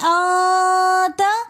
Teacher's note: انت کے اندر ہم غنہ کر کے پڑھیں گے کیونکہ نون ساکن کے بعد اخفا کے 15 حروفوں میں سے تا آ رہا ہے تو ہم نے یہاں پر پڑھنا ہے آتا۔